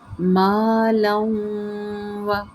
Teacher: مالوں و، یہاں پہ ادغام ما غننے کا قاعدہ ہے، تنوین کو ہم نے واو مشدد کے اندر ملانا ہے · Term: ادغام ما غنہ